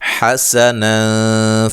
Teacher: یہاں نون تنوین کا اظہار ہے، غنہ نہیں کریں گے